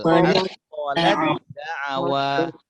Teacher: Jadi huruf ta ini macam tak ada, langsung dibaca masukkan ke dal.